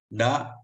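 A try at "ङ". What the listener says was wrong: Not da. Nga. Nga. Nga.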